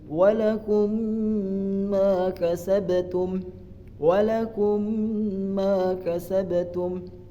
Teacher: Yang contoh kedua yaitu ada idgham mutamissilain, yaitu apabila mim sukun bertemu dengan mim, dibacanya ada gunahnya 2 harokat